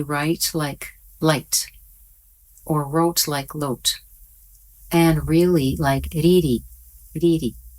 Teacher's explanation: the Japanese have one sound that they use for the English R and L, and the sound that they use sounds like an English L or D